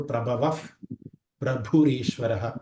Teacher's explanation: ವಿಸರ್ಗದ ಮುಂದೆ ಪಾ ಇರೋದ್ರಿಂದ ಫಕಾರವನ್ನು ಯೂಸ್ ಮಾಡಬೇಕು. ಪ್ರಭವಫ್ ಪ್ರಭುರೀಶ್ವರ ಭೂಮ ಅಂತ ಮಹಾಪ್ರಾಣ ಬರುತ್ತೆ.